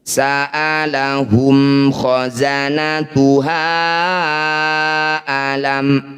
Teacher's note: bunyi mim sukun baca jelas, pastikan bibir kita rapat, tidak usah dengung. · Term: idhar syafawi